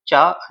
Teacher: चा वर्ग के व्यंजन, क्योंकि जीभ जब हम बोलते हैं तो चा, जीभ जो हमारी तालु में टच होती है, तो चा वर्ग के जो व्यंजन होते हैं वो तालव्य होते हैं।